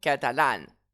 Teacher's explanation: Le a final de catalane va être accentué.